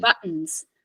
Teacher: buttons isn't a flap T in fact it's a glottal stop